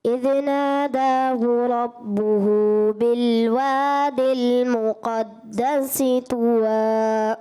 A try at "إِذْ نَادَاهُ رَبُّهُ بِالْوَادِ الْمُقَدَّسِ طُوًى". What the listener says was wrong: اذ نادہ، دال کو ہلانا نہیں ہوتا، دال حرف قلقلہ میں سے نہیں، دال ہوتا ہے. اگر دال ہوتا تو آپ اس میں قلقلہ کرتے.